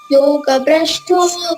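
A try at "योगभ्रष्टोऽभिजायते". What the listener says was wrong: ಜಾಯತೆ ಇಲ್ಲ, ನೀವು ಅಭಿಜಾಯತೆ. ನೀವು ಅಭಿಜಾಯತೆ.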